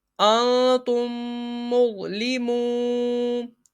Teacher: میم ساکن کے بعد دوسری میم آ جائے تو میم ساکن میں ادغام شفوی ہوگا، یعنی غنہ کر کے پڑھیں گے